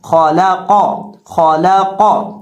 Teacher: ہم خا کو اور قاف کو دونوں کو موٹا کر کے پڑھیں گے، خا کو بھی موٹا کر کے پڑھیں گے اور قاف کو بھی موٹا کر کے پڑھیں گے، لیکن درمیان میں جو لام ہے لام کو باریک پڑھیں گے، لام کو موٹا نہیں کریں گے۔